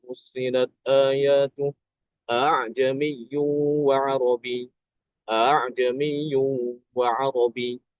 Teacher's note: Kemudian lafaz a'ajami yang ada di surat Fussilat ayat 44. Ya, itu kan Imam Hafiz kita membaca dengan tashil ya.